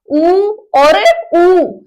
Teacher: हमारे जो होठ है वो कैसे आकार के हो जाते हैं? वृत्त के समान, यानी कि गोलाई ले लेते हैं। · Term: वृत्ताकार